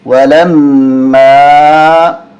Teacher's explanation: غنہ کریں گے، میم مشدد ہے۔